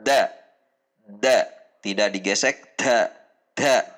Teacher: dibaca dengan sedikit mendorong udara seperti huruf ta